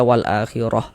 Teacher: kalau misalkan kita berwakaf di huruf di huruf tamarbutah kita baca wal akhirah. Jangan dibaca wal akhirat.